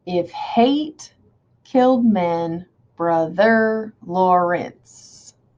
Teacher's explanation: that almost sounds like stressed, unstressed, stressed, unstressed